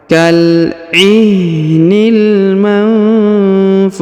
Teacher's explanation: Huruf nun sukun bertemu huruf ha maka didengungkan dan disamarkan. Kal ihnil manfush.